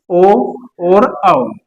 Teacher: आपका ओ और औ बोल लोगे तो भी आपके गोलाकार हो गए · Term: व्रतमुखी स्वर